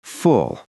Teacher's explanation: In English, some L sounds are what we call dark. The back of your tongue rises a little, and it sounds almost like there's a tiny O or W hiding inside. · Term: dark L